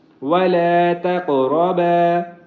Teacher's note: قاف کو موٹا بھی کریں گے، اس کے اوپر قلقلہ بھی کریں گے، کیونکہ یہ حروف قلقلہ میں سے ہے اور اس کے اوپر ساکن ہے۔